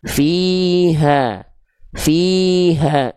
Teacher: H besar di sini pastikan nafasnya mengalir, suaranya mengalir.